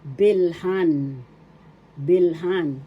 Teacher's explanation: Now let's have the pandiwa bil first syllable B second syllable the accent is the second syllable it becomes bilhan